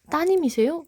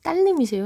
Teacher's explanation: 음운 변동 현상에서 따님, 리을이 탈락이 됐습니다